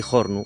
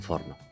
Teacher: en el dialecto oriental la F inicial aspírase